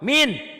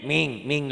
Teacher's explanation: ternyata kalau orang sana N-nya jadi eng